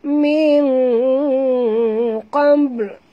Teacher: nun mati bertemu qaf, kita kena sorokkan bunyi nun ke dalam qaf disertai dengung dua harakat. Ikhfa haqiqi ya, dan huruf ba sini dia ada tanda mati di atasnya, kita kena lantunkan dia.